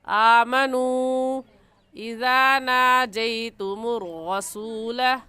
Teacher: तख्ती नंबर 9 नूरानी कायदे में हम ये पढ़ चुके हैं मद के उसूल व कवाइद के हुरूफ मद्दा के बाद हमज़ा अगले कलमे में आ जाए तो उस मद का नाम होता है मद्दे मुनफसिल और मद्दे जायज़। और इस मद को हम 3 अलिफ के बराबर खींचेंगे, इससे कम या ज़्यादा नहीं खींचेंगे